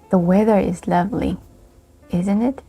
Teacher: we also use falling intonation in question tags. But in this case, we are not asking questions.